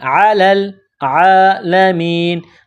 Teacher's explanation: لام کو لام کے ساتھ ملانا ہے،